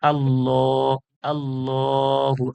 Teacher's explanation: দেখে নিই আল্লাহ আল্লাহু আকবার এইজন্য আল্লাহর লামকে পুর করা হচ্ছে আল্লাহর লামের পূর্বে জবার আছে বলে আল্লাহর লাম পুর হচ্ছে